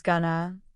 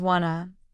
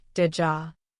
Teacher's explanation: going to often becomes gonna, want to becomes wanna, did you sounds like didja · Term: connected speech